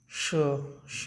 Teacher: श बोलेंगे तो तालु हमारा जीभ टच करता है